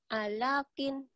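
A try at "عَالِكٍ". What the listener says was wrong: Ada yang panjang.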